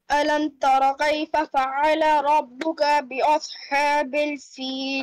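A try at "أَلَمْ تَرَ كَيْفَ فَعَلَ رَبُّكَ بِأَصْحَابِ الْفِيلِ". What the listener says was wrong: Ka must not be stretched.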